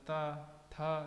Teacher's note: ता, था जब बोलेंगे तो पता चलता है दांत का इस्तेमाल होता है।